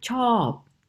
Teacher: When I teach students how to make a falling tone, for example, on the word, on an example word like chop, to like, they've got a long vowel there and a clear opportunity to make a clear falling tone